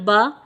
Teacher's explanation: जब हमने बा ज़बर बा पढ़ा तो हमारा मुंह और आवाज़ खुल गया तो ज़बर अदा हो गई।